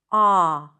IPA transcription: ɑ